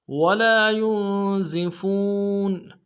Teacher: دال میں کھینچیں گے، یا کو نون کے ساتھ ملانا ہے، نون ساکن غنہ کریں گے، زا کی سیٹی باریک ادا ہوگی ، فا کو واو کے ساتھ ملانا ہے، واو مدہ ایک